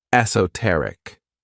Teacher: the stress is on that third syllable